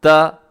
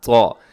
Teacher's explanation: اسے آپ نے رکھنا ہے بہت باریک رکھنا ہے، جتنا باریک کر سکتے ہیں باریک رکھیے گا، اور دوسرا ہے طا، اسے آپ جتنا موٹا کر سکتے ہیں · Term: تا طا